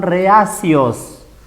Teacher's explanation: Acá encontramos una vocal abierta, la E, con otra vocal abierta, la A. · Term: hiato simple